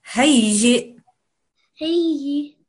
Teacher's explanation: you have to join it to the hamza. It makes a very slight jerking sound.